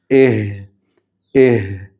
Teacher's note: ഹ ഉച്ചരിക്കുമ്പോൾ തൊണ്ടയുടെ താഴ്ഭാഗത്ത് നിന്ന് പുറപ്പെടുന്ന ഹ ആണെന്ന് പ്രത്യേകം ശ്രദ്ധിക്കുക.